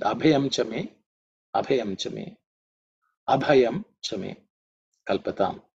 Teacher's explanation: In terms of pronunciation, the bha, the second letter, is aspirated because it's the fourth letter in the pa varga.